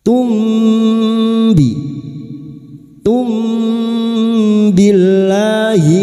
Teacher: Mim sukun dibaca samar dan kita dengungkan selama tiga harakat. Dan siap-siap membunyikan huruf ba. · Lam jalalah yang didahuli kasrah dibaca tarkik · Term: ikhfa syafawi